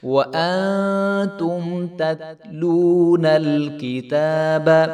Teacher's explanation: واو ساکن سے پہلے پیش ہے، تو اس کو ہم ایک الف کے برابر لمبا کریں گے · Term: واو مدہ